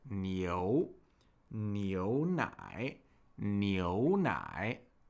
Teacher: And then the diphthong it's paired with, eo, eo, combines two vowel sounds, e and u, to make eo, eo. And it's an ascending diphthong, so we put a little more stress on the latter vowel in the sound.